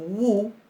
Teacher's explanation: Cuando decimos WU, en ese movimiento se nota que esa U muy cerrada está funcionando como una consonante para articular otra vocal que puede ser de la misma calidad, ¿verdad?